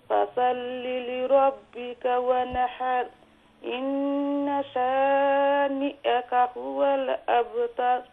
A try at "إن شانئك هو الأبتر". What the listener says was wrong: ما شاء الله.